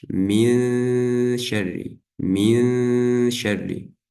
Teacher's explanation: Махрадж буквы шин — это середина языка с противоположным твердым небом.